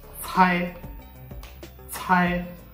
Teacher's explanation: C is pronounced like the TS at the end of tests, and it should be aspirated. Okay. Means air should come out of your mouth.